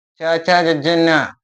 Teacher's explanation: ದವಡೆಯ ಸಹಾಯದಿಂದ ಉತ್ಪತ್ತಿಯಾಗುವ ಅಕ್ಷರಗಳು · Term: ತಾಲವ್ಯ